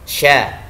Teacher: Shin memiliki sifat rokhawah artinya membacanya mengalir.